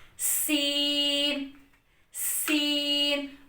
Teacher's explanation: زبان کی نوک سے اوپر نیچے کے اگلے دونوں دانتوں کو آپس میں ملا کر ہم نے سین کو پڑھنا ہے، یعنی اوپر اور نیچے کے دونوں دانتوں کو آپس میں ملانا ہے۔ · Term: سیٹی والے حروف